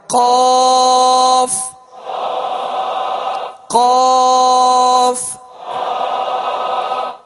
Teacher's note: زبان کی جڑ اور تالو کے نرم حصے سے دو نقطے والا قاف جو پر پڑھا جاتا ہے وہ ادا ہوتا ہے. زبان کی جڑ اور تالو کا نرم حصہ، اس سے قاف ادا ہوتا ہے جو پر پڑھا جاتا ہے، یعنی دو نقطے والا.